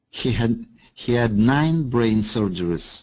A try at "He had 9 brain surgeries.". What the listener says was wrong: That's perfect. That's right.